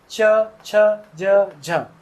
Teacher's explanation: हवा रगड़ती हुई बाहर निकलती है। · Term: स्पर्श संघर्षी व्यंजन